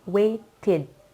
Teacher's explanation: ketika kita tambahkan ed ending yang memproduce bunyi id, maka bertambah suku katanya. Contohnya tadi, asalnya wait, 1 suku kata, ketika ditambah id menjadi waited, 2 suku kata. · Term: one extra syllable